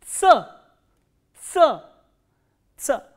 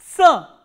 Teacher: This sound is produced when the tip of the tongue touches the lower teeth and the front part of the tongue closes the alveoli for a while.